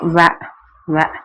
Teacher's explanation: வ மேல் பல்லும் கீழுதலும் வ வ இணைய வகாரம் பிறக்கும். மேற்பல்லானது கீழ் இதழை பொருந்த வகாரம் பிறக்கும்.